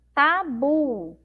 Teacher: a sílaba bu é a sílaba mais forte